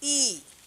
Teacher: যে স্বরধ্বনি উচ্চারণের সময় মুখ গোল না হয়ে বিস্তৃত অবস্থায় থাকে, তাহলে সেই স্বরধ্বনিকে বলা হয় অগোলাকৃত স্বরধ্বনি।